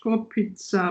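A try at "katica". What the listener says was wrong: Kotica, avec T. K-A-T. Koti, c'est comme Kotoline.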